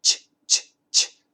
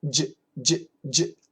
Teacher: The CH. Ch, ch, ch. There's no vibration. The J. J, j, j. There's vibration. The CH we touch.